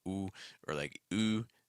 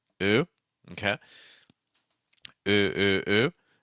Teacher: Most likely your language has this sound, but it may sound something more like ooh or like oo or anything like that, with where the sound is really projected forward and there's a lot of tensing of the lips. In American English, we're not going to do that quite as much.